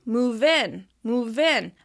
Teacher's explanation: Be sure to link the words together. You don't want to pause between them. They should sound like one blended word. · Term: linking